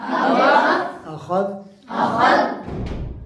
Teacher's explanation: اس کو ذال کو نہیں ہلانا، اس کو ساکن کر دینا